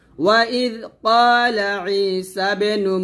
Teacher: ওয়াইদ ক্বালা ঈসা বিনু, ই আইন ইয়াজির ই, এখানে এক লিপ টান দিবেন, ঈসা বে কলকলা হবে